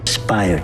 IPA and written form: əˈspaɪər (Aspire)